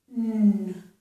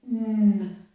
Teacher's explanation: This is a nasal sound. The air is coming through my nose. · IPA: /ŋ/